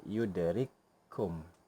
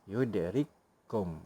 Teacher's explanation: Seolah-olah menjadi satu huruf yang bertasydid. Seolah-olah hanya satu sahaja kaf di situ pada bacaan. Tetapi pada penulisan, kita perlu tulis dua kaf. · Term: idgham mutamasilain